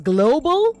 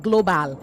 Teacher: the b a l at the end form a syllabic consonant